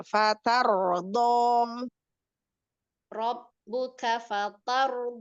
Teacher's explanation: jadi hanya di rnya aja ro sukunnya aja yang tebal